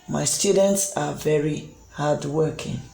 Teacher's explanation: So in the statement part, at the end of the sentence, you notice that the voice or the pitch of the voice gets lowered. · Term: falling intonation